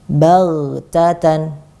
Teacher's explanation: Ghoinya kita tebalkan, ya, kita rokhawahkan dan kita tebalkan.